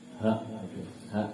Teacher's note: Yang kedua H. Kalau H dia diambil dari pangkal tenggorokan